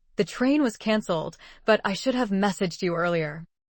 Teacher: Stress should because it highlights the action that was still under your control. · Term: Contrast stress